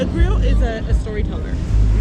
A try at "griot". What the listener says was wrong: You're pronouncing it griot. No T on the end.